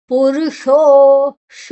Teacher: ಷಣ್ಮುಖ ಶ ನಾಲಿಗೆಯನ್ನ ಮಡಚಿ ಹೇಳಬೇಕು